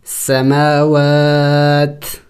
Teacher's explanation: وقف میں ہم نے اس تا کو سائلنٹ کرنا ہوگا، یعنی ساکن کرنا ہوگا